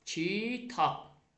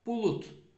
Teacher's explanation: sondakı B, D, C, C özlərinin kar qarşılığı kimi tələffüz olunacaq. Yəni, B, P-yə çevriləcək, D, T-yə çevriləcək, C, K-yə, C, D, C-yə çevriləcək.